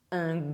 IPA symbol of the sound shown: g